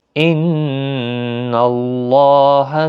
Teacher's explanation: ان نون مشدد پر غنہ ہوگا، اللہ کا لام اس زبر کی وجہ سے پر پڑھا جائے گا، اس کے اوپر کھڑی زبر بھی ہے، ایک الف کی مقدار کے برابر کھینچ کر بھی پڑھیں گے۔